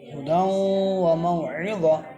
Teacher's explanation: تا کے 2 زبر کو وقف کی حالت میں گول ہا سے بدل دیں گے